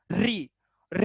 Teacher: री री बोल रहे होगे तो हमारी जीभ इतनी जोर से फड़फड़ा रही होगी